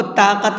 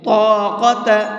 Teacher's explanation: لا طاقة، یہاں پر یہ طا ہے، تا نہیں ہے، تو آپ کو طاقت نہیں پڑھنا ہے بلکہ طاقت، اس لیے کہ طا ہمیشہ پر پڑھا جاتا ہے، منہ بھر کے پڑھا جاتا ہے